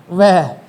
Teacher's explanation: वह का उच्चारण करते समय ऊपर वाले दांत है ना, वो नीचे वाले होठ को छूते हैं। · वह बोलोगे तो ऊपर वाले दांत क्या करेंगे? नीचे वाले होठ को छुएंगे। तो दो से मिलकर बोला जाता है, दांत और ओष्ठ से मिलकर बोला जाता है। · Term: दंतोष्ठ